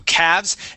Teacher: Now that L is going to be silent